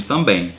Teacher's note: O dígrafo vocálico é quando eu tenho na mesma vogal ali, ou melhor, na mesma sílaba, uma vogal mais a letra M ou N. E isso aí traz um som nasal, então esse M ou N não será pronunciado, como no caso de também.